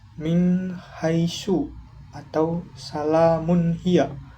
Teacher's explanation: ketika nun sukun atau tanwin dibaca dengan jelas tanpa dengung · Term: idhar halqi